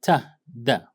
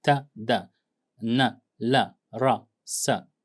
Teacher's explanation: Alveolar consonants, when we talk about alveolar sounds, that is the area behind the upper teeth, okay, that, the gum or area behind the upper teeth, like here, okay. So alveolar consonants involve the tongue touching the alveolar ridge behind the upper front teeth. The tongue, the blade or the tip of the tongue touches this area, that is the alveolar ridge, the area behind, the upper front teeth.